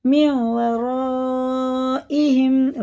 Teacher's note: را الف مزبر را میم و را، مد متصل ہے کیونکہ اس کے بعد حمزہ آ رہا، اس کو ہم چار الف کے برابر کھینچ کے پڑھیں گے۔ حمزہ زیر ای ہا میم زیر ہم، من ورائہم، را پر بھی ہے۔